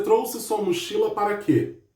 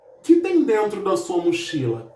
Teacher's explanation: Esse que foi pronunciado de uma forma bem fraca. Então nós chamamos esse que nessa frase de monossílabo átono.